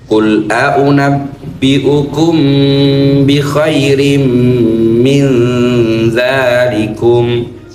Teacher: dzanya dua ketukan matobi · Min ketemu dzal, nun ketemu dzal, akhirnya ikhfa. Ikhfa syafawi sama tiga ketukan.